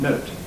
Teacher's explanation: it's clearly final, it's a final T, and as such, it's not strongly aspirated. Note. It may have a bit of aspiration, but not strong aspiration.